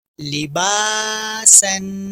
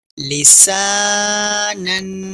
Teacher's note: اس لفظ میں بھی پہلے حرف کو نہیں کھینچیں گے، دوسرے حرف کو ایک الف کے برابر کھینچ کر پڑھیں گے، اور تیسرے حرف کے آخر میں ہم غنہ کریں گے۔